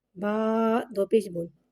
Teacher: با پہ تنوین یعنی کہ 2 پیش ہے، 2 پیش ہونٹوں کی گلائی کے ساتھ ادا کر کے پڑھیں گے